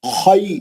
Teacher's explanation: خی لین ہو رہا، وہ یا ساکن سے پہلے خا پہ زبر ہے